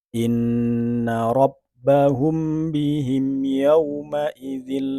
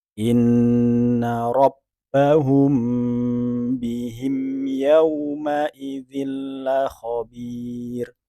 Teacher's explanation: seharusnya dia dibaca dengung dengan menahan lebih panjang